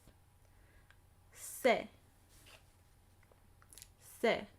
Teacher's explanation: Se. And the tip of my tongue is coming ever so slightly in contact with the back of my teeth. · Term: soft S